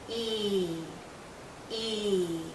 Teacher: Our lips are very spread, very pulled out, and this is a long vowel sound. So think of your lips being pulled out like the vowel sound is being pulled out because it's a long sound. · Our tongue is generally high, our mouth is closed. Again, our lips are pulled. And there's a lot of tension in this vowel sound. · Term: long sound E